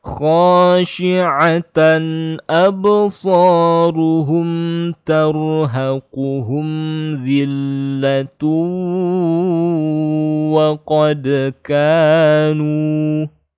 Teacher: kalau kita sambung zillatu harus ditahan gunnah dia ya